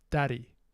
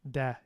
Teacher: Dia keluar dari pasar. It seems that a vowel gets fronted and raised a bit after voiced consonants, or at least voice stops.